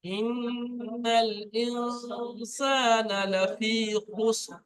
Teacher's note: নুন সাকনের পরে সিন এসছে, এটা ইকফায় হাকিকি, নুনটা গুণনা করতে হবে।